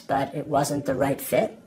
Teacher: My voice is rising at the ends of both those statements but I'm not asking a question. That's uptuck.